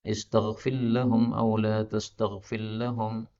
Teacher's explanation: Ini saya baca dengan idgham karena ra ketemu dengan lam, ini boleh idgham.